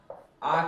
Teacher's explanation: आ का उच्चारण करने पर पूरी तरह से मुंह जो है खुल जाता है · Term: विवृत स्वर